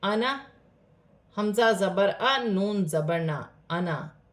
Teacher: آنا، یہاں پر الف مدہ بن رہا ہے، لیکن قرآن پاک میں جب بھی آنا کا لفظ آئے گا تو اس آنا الف کو پڑھا نہیں جائے گا. اسے جلدی سے آنا، حمزہ زبر آ، نون زبر نا، آنا، اس طریقے سے پڑھا جائے گا.